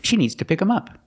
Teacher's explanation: sometimes you'll hear Americans say pick them pick them up and they don't pronounce the th sound